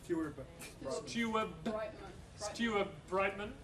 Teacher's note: Because of the B in Brightman, the D in Steward changes to a B as well. So again, alveolar to bilabial.